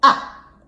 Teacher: the fourth tone falls in pitch from high to low level and it's represented by just a little swish going down ah